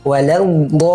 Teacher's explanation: la di sini huruf lamnya tipis. Selanjutnya ada huruf do yang tebal.